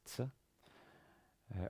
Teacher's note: in modern Israel it's pronounced as a TS, tz. Originally it was more like a th, what we call an emphatic S, but for you simply use the TS, that's fine. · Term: Tzade